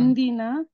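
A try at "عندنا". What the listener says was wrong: लेकिन यहाँ से ना इंदना, दा जबर के साथ आ रहा है, ठीक है। इंदना,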